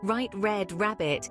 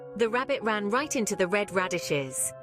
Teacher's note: notice how the r sound is smooth and continuous almost like a soft growl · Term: English R